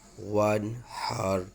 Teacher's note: را موٹا پڑھا جائے گا کیونکہ ما قبل زبر ہے